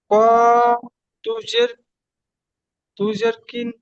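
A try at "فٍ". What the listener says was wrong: ফা, এটা কফ নয়, ফা।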